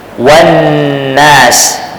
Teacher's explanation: lam itu tidak dinyatakan bunyinya ataupun tidak disebut bunyi lam itu ha dia terus bunyi Apa bunyi Nun ha kerana diidramkan kepada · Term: idgham lam takrif pada Nun, idgham lam ta'rif